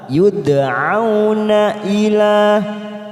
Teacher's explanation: karena ada huruf Dal yang mati di tengah kalimat kita pantulkan